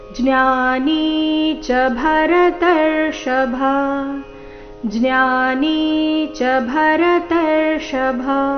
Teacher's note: ಜ್ಞಾನಿ ಎರಡು ಸಹ ದೀರ್ಘ ಜ್ಞಾ ಮತ್ತೆ ನಿ